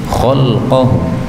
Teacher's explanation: Ini lamnya boleh disukun menjadi khalqahu